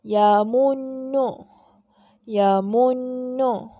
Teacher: Kita kena baca dengan dengung. Dengung dengan kadar bacaan 2 harakat.